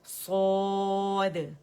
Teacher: دال سکون کے ساتھ ہے تو اس پہ قلقلہ باریک واضح کریں گے